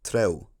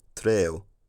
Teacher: that last element of the diphthong, the u part, took on the same tongue height as the e part, producing something like treo. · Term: height harmonization